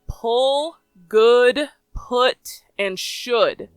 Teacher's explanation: the capital u or uh noise is more closed